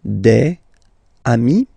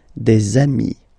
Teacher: if you make the liaison, so the link between the two, you will get des amis